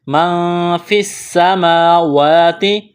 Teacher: فا کو سین کے ساتھ ملانا ہے